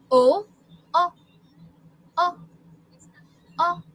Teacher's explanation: It's rounded, and the force is like in the front of your mouth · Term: short vowel sound O